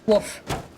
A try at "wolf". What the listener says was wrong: You're saying woof. I swear to God, you're having me on. It sounds like woof.